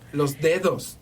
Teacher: el serrano te dice los dedos, bien marcado, con los dientes